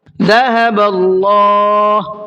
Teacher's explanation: اللہ کے لام کو منہ بھر کے پڑھنا ہے, اس لیے کہ اللہ کے لام سے پہلے زبر ہے, اور اللہ کے لام سے پہلے زبر ہوتا ہے تو اس کو منہ بھر کے پڑھتے ہیں.